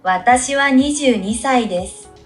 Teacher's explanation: She didn't say the oo at the end.